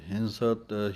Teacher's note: ਹਿੰਸਤ ਪਾਠ ਹਾਹੇ ਸਿਹਾਰੀ ਟਿੱਪੀ ਦਾ ਧਿਆਨ ਰੱਖ ਕੇ ਨੱਕ 'ਚ ਆਵਾਜ਼ ਦੇ ਕੇ ਬੋਲਣਾ ਹੈ